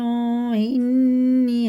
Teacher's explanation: نون میں شد ہے، غنہ کریں گے